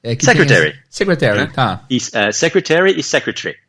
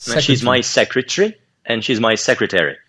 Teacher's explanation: Então você vê que é uma sílaba menos, né, no sotaque britânico do que no americano.